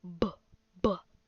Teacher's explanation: feel your throat and you'll hear it vibrate